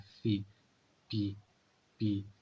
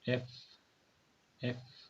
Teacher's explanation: और जो एफ sound है उस आपने क्या करना है, जो अपर टीथ है वो आपकी लोअर लिप्स को टच करे